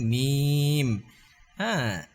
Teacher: মিম দুই ঠোঁট মিলায় উচ্চারণ করতে হবে